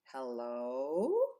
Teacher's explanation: pitch is how high or low we make our voices so if I say hello you can hear how I'm going from low to high